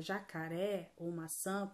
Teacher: Já na palavra jacaré ou maçã, por exemplo, nós vamos ter a classificação de oxítona, já que é a última sílaba delas que é a mais forte